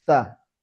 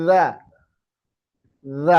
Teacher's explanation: Ini sama tempatnya, ujung lidah keluar. Tapi satunya hamas, fokusnya angin.